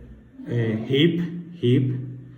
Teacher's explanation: And the last one that we have here is the consonant ha, which is voiceless, a glottal by fricative.